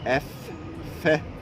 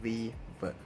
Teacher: In pronunciation, use lower lip to touch upper tooth to produce a sound. F is a voiceless labiodental fricative and V is voiced labiodental fricative.